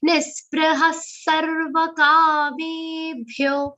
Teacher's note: Two visarga in this charan. Both will be pronounced like half sa, mild sa sound.